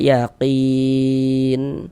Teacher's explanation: huruf nun di sini tidak dibaca panjang karena berwakaf di huruf yang tidak dibaca panjang. Hurufnya kita sukunkan, hurufnya kita matikan.